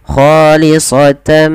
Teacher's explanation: Pada dasarnya dibaca khalisatan karena bertemu dengan mim, tannya dimasukkan ke huruf mim. Nah, ini yang namanya idgham.